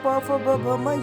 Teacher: प वर्ग मतलब इसमें ओष्ठ ओष्ठ से है ये